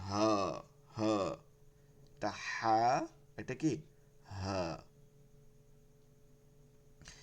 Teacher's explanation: হলকের শুরু থেকে নিতে হবে হলকের শুরুতে সহজভাবে মানে এটাকে কঠিন ভাবে চাপটা দিয়ে টিয়া করা যাবে না সহজভাবে